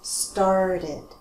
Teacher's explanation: Now we have an extra syllable because these verbs end with a T or a D sound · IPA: /ɪd/